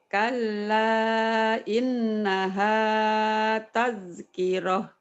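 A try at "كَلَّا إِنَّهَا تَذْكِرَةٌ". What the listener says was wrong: Bagus.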